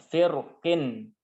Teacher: tebal itu kedua bibir kita majukan ke depan